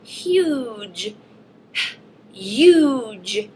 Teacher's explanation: I hear that long vowel sound before my J